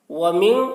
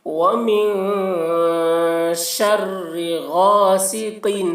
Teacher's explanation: ومن یہاں پر نون میں اخفا کریں گے